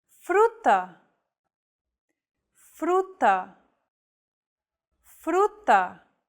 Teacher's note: one of these consonants FR focus on the second letter R this Trill sound is done by lightly tapping the gum Ridge behind your upper teeth with the tip of your tongue · It should be a quick, striking motion, similar to the sensation you get when pronouncing the T in words like butter, cutter, and so on. Don't roll your tongue like an English R. Most of the air should go around the sides of your tongue.